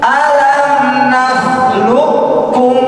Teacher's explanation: qofnya hil hilang langsung masuk Masuk ke huruf kaf